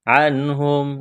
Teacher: عنہم، نون ساکن کے بعد ہا ہے، حروف حلقی ہے تو یہاں پر غنہ نہیں کریں گے، اظہار کریں گے، آواز ناک میں نہیں چھپائیں گے